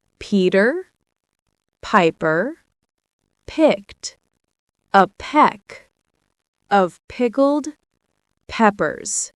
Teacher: Focus on the strong P sound, like a small puff of air. If you're not sure, put your hand in front of your mouth.